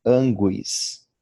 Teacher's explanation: O U é pronunciado e o acento é no A inicial.